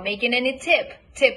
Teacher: stress the content word the content word is tip